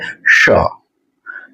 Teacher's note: થોડીક વધારે ઉપરના તાળવા બાજુ જાય છે. હવા પસાર થાય છે. જીભની બંને બાજુથી હવા પસાર થાય છે અને જ્યાં શ બોલાણો ને એનાથી પણ જીભ ઉપર વઈ જાય